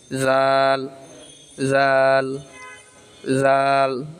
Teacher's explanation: নরম করে জিহ্বার আগা উপরের দাঁতের তালুর সঙ্গে লাগাইয়া